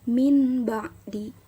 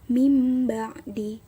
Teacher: nya menjadi suara Mim sukun seperti yang ada di sebelah kiri Jadi dibacanya bukan Min ba'di tapi mimba'di diubah menjadi mim sukun dan ditahan dua harokat · Diubah menjadi mim sukun dan ditahan 2 harokat. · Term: iqlab